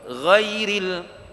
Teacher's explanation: Ghairil ra kasrah dia bunyi apa nama tarqiq nipis. Tarqiq ni maksudnya nipis.